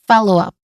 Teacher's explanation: So the stress syllable here is in the first syllable.